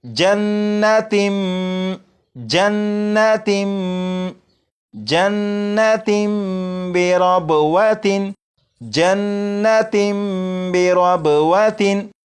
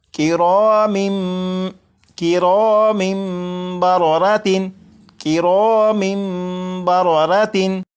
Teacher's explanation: तनवीन के अंदर जो नून साकिन की आवाज़ होती है उसे मीम से बदलकर गुन्ना करके पढ़ेंगे। जैसे यहाँ पर लिखा है तिन, इसे पढ़ेंगे तिम, तिम। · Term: इकलाब